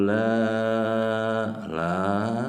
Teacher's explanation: Mad Thobi'i bertemu Hamzah dalam beda kalimat berapa panjangnya panjangnya boleh 4 boleh 5 harokat